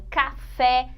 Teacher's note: em café é a última sílaba Essa é a sílaba tônica